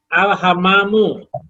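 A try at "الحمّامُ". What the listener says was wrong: Alham. Alhammamu. Mimnya ditafsirkan, Pak.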